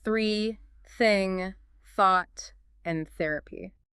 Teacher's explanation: Your vocal cords are silent. The sound is produced entirely by the friction of air moving through your mouth. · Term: voiceless